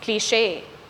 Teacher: The stress in this word falls on the second syllable.